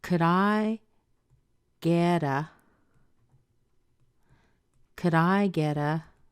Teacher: we're stressing the I here